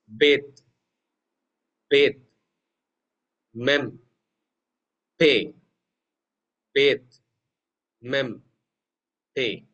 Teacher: So only with the help of the two lips you will be able to pronounce these letters. So they are called as labials.